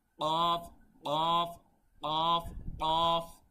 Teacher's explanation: ক বললে হবে না বলতে হবে কফ কফ কফ কফ ঠিক আছে গলার ভেতর থেকে